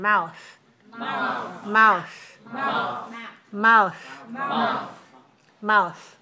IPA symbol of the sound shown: θ